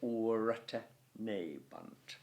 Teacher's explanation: Okay, so it's te for teneband. The A of aura must be short because this is a dactyl, and the O must be long because this is a dactyl.